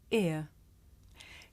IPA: ɪə